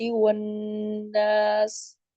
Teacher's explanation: تھوڑا سا مد میں کمی ہے، مد عارض وقفی میں کمی ہے